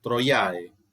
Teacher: Esta O de troiae es larga porque es una palabra claramente que está importada del griego. En griego es una O, mega. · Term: O larga